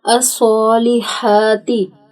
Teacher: صاد اور ہا کے اوپر کھڑی زبر ہے جس کو ہم نے ایک الف کے برابر لمبا کرنا ہے